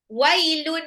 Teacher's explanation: Wailun waw harokat fathah ketemu sama ya sukun itu adalah sifat lin.